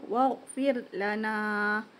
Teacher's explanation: Ra bertanda mati, sebelumnya adalah berbaris bawah. Jadi bacaannya dengan tipis.